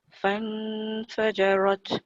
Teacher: tak boleh bunyi nun yang jelas sebab nun itu bukannya hukum izhar. Dia jadi ikhfa kan.